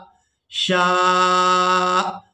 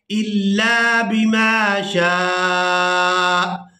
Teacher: شا آخر میں جھٹکا سا محسوس ہوگا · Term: حمزہ